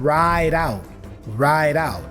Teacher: the D for ride again has the flap sound